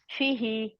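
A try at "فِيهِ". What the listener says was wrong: ہی کو نہ کھینچے.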